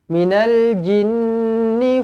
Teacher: wajibul gunnah, dengungkan dua harokat